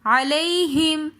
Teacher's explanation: علیہم میں یا لین ہے، یا ساکن ہے، اس سے پہلے زبر ہے تو ایسی یا لین کہلائی جاتی ہے، یا لین کو ہم بغیر کھینچے پڑھتے ہیں۔